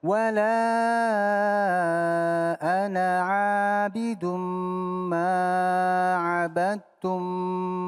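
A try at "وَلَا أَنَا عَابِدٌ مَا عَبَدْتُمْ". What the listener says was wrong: Satu ayunan aja. Ma'abad, jangan itu kepanjangan.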